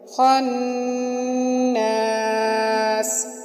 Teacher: خا کو موٹا کر کے نون کے اوپر غنہ کیا اور سین کے ساتھ سین کو ہم نے سیٹی کی آواز میں پڑھا